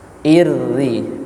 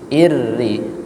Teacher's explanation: Kalau tasdidnya kasrah, irri, tipis, irri